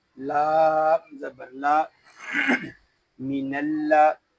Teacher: یہاں الف جو ہے یہ نہیں پڑھا جا رہا ہم نون کو لام کے ساتھ ملا دیں گے